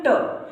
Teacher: जैसे हमने बोला ट, ट वर्ग पूरा आता है ट, तो ट में हमारा जो जीभ है वो तालु को, तो तालु के मतलब ऊपरी भाग को स्पर्श करती है। ठीक है, तो ये आता है हमारा ट वर्ग मूर्धन्य में।